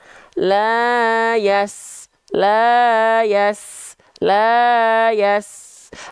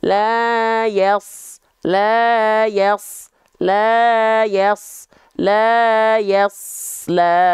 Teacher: kalau Sin itu pangkal lidah kita enggak diangkat